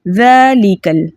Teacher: ذال کے اوپر کھڑا زبر ہے، کھڑے زبر کو 2 حرکت کی مقدار کھینچ کر پڑھتے ہیں۔ لام کے نیچے زیر ہے، زیر کو بغیر کھینچے، بغیر جھٹکا دیے متوسط اور معروف طریقے سے پڑھتے ہیں۔